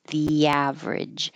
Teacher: You're going from a high E to A, so keep your tongue moving and sliding, and an invisible W will happen.